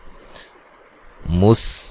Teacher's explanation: सीन को बारीक सीटी से अदा किया जाएगा